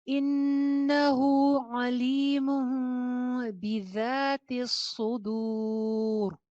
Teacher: الٹی پیش اور واو مدہ بالکل سیم ہوتے ہیں، ایک ایک الف کے برابر دونوں کو کھینچا جاتا ہے